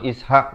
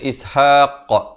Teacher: Kalau dari segi bacaan bertajwidnya lah ya, mesti ada lantunan, pantulan di situ.